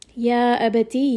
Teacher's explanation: Ya is going to be a 4-count mad.